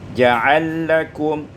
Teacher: Pada ayat yang ke-11 ja'ala lakum, idghamul lam fil lam, diidghamkan lam pada lam menjadi ja'alakum.